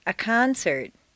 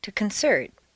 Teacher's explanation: change the stress from the first syllable for nouns to the second syllable for verbs. This is a regular, consistent change.